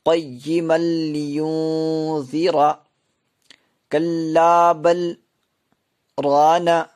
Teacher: قیما لینذر، قیما لینذر، یوں یہاں پہ اکفا، نون ساکن کے بعد حروف اکفا میں سے زال آ رہا ہے، اس لیے یہاں پر نون ساکن کی آواز کو ایک الف کے برابر ناک میں چھپا کے پڑھیں گے، را موٹی پڑھی جائے گی۔